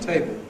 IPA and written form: ˈteɪbo (table)